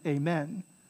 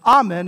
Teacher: if you're praying in english you would end with amen amen so in english it's stressed on the men in latin is stressed on the ah